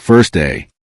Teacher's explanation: in the phrase first day the final t become very weak before the d sound. The phrase may sound like first day.